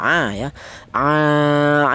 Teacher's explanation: Huruf ain ini keluarnya huruf berasal dari tenggorokan bagian tengah